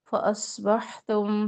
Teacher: صاد موٹا ہے اور حا میں ہمس کی کیفیت اور وسط الحلق سے